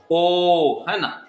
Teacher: ओ के उच्चारण में देखिए कंठ भी शामिल हो रहा है और ओष्ठ भी शामिल हो रहा है